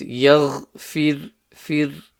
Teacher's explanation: So the ghain needs to be clear. The ra is empty mouth because it has a kasra before it.